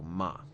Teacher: it's just an easy simple falling tone